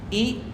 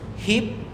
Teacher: The lips are slightly spread and the sound is short. The tongue tip is raised slightly at the front towards the alveolar in the longer sound and the tongue rests higher.